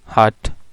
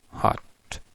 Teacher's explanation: ये ठ साउंड है ये रिलीज्ड है यानी एस्पिरेटेड है, और दूसरे में ये अनरिलीज्ड है